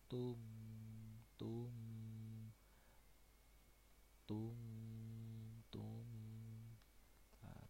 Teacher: Tanwin bertemu mim ini idgham bi gunah